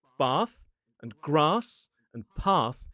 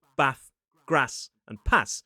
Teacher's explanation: some words that in the south are pronounced with that /ɑː/ sound, in the north get pronounced with /æ/ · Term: trap–bath split